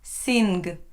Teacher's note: There is no n and then a g sound. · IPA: sɪŋ